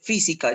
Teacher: tienes la mayor fuerza de voz en la tercera sílaba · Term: esdrújula